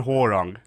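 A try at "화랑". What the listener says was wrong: Don't call him whole wrong. Call him like wall wrong or how wrong or something like that. Pronounce it like the games do. Call him wrong, and it's going to sound really bad.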